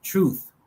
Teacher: In nouns on the other hand, final th is normally realized as theta.